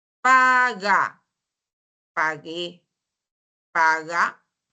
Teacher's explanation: la articulación se da en la úvula no en el Pos dorso de la lengua en ambos casos